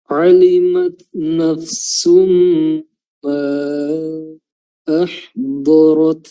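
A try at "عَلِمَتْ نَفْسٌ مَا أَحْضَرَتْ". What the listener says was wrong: Ulang di huruf fa, jangan langsung dilepas ya, diberikan haknya, makhrajnya diperjelas dulu sebelum pindah ke huruf yang setelahnya. Nafsu, nafsu ya, memang agak rumit karena perpindahannya itu dari bibir ke dalam ke ujung lidah. Nafsu, alimat nafsum, nafsum, jadi fa-nya diperjelas dulu sebelum pindah. Idgham bi gunnah, diberikan durasi lagi. Nafsum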